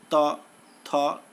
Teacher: दंत्याः दंत वर्ण जिह्वाग्र कर्णाः जिह्वा के अग्रभाग से उच्चरित होता है, जैसे त, थ इत्यादि।